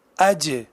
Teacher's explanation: یہ زبان کے وسط سے اور اس کے مقابل اوپر کے تالو سے ادا ہو رہا ہے اور یہی اس کا مخرج ہے۔ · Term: جیم